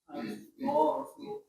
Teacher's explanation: Di mana makhraj dhad? Di pinggir lidah kiri atau kanan sama gigi geraham.